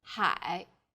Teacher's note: a third falling then Rising tone